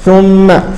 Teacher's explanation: نعم هي حركتان فقط، حركتان فقط، الحرف المشدد الميم المشددة تغن حركتين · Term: الشدة والغنة